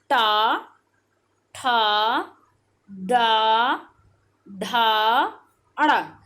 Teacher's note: मूर्धा से बोले जाते हैं। किससे बोले जाते हैं, मूर्धा से, जिसमें आपकी जीवा क्या होती है, फोल्ड होती है